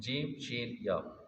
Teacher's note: زبان کے درمیان سے اور تالو کے درمیان سے یہ ادا ہوگا، شین بھی یہیں سے ادا ہوگا، یا بھی ادھر سے ادا ہوگا، تینوں، جیم، شین، یا، زبان کے درمیان سے اور تالو کے درمیان سے۔